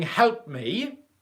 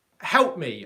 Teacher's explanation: The only difference is the pause is longer in the past version.